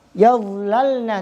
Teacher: Maka hukumnya harus izhar. Artinya hukum lam di sini izhar, tidak boleh dibaca kun na'am.